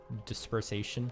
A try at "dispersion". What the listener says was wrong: it was close though. dispersion. Yeah, you added a syllable. Dispersation.